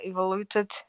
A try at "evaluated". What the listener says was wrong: It's evaluated, I think. You said evaluated, like evolution, but it's about value. It's about value. Evaluated.